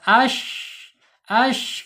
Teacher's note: Shin secara makhraj ada di alisan ya. Alisan ya, yaitu di tengah-tengah lidah ya, punggung lidahnya terangkat,